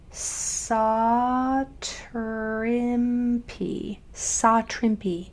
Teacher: we have that A that's saying ah because it comes before a W. So an A can come on either side of the W and it still says ah.